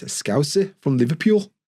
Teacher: They've got rising intonation. Liverpool, it goes up.